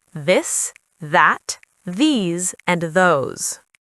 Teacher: When you say them, your throat vibrates slightly. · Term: voiced sound